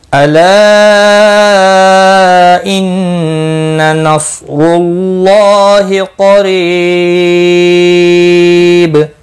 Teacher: قریب قاف مستعلیہ ہے، پر پڑھا جائے گا، ری یا مدہ ہے، 1 الف کے برابر کھینچ کر پڑھیں گے، اور وقف کی صورت میں با ساکن پڑھا جائے گا، اس پر قلقلہ بھی ہوگا۔ · اللہ کا لام زبر کی وجہ سے پر پڑھا جائے گا، یعنی پچھلے حرف کے اوپر جو زبر ہے اس کی وجہ سے پر پڑھا جائے گا، اللہ کا لام کے اوپر کھڑی زبر بھی ہے، 1 الف کے برابر کھینچ کر پڑھیں گے۔